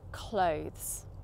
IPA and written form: kləʊ(ð)z (clothes)